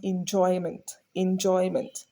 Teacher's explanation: you will notice that Joy is naturally higher you can hear that Joy clearer then you will hear in and M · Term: stress